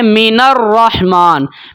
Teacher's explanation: جیسے کہ ہم پڑھتے ہیں من الرحمن، مینر نون کو ہم ملا رہے ہیں را کے ساتھ، جو درمیان میں حمزہ استعمال ہوئی تھی وہ گر گئی ہے، اس کو ہم نے نہیں پڑھنا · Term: حمزۃ الوصل